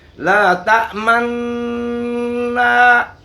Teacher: تو ادغام مال اشمام کی کیفیت ادا یہ ہے کہ نون کی تشدید اور اس کے غنہ کے ادا کرتے وقت دونوں ہونٹوں کو گول کر لیا جائے، جس طرح ضمہ میں کیا جاتا ہے۔ ادائیگی دیکھیں میرے زبان سے، لا تأمنا، اس طرح ہونٹوں کو گول کرنا ہے۔